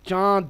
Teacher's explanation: গুন্না কি নাকের ভেতরে আওয়াজ নিয়ে গিয়ে ধরে রাখা গুনগুন আওয়াজ যেটা হয় যেমন বাংলাতেও আমরা ব্যবহার করে থাকি চন্দ্রবিন্দুর উচ্চারণ বাংলাতে চন্দ্রবিন্দুর উচ্চারণটা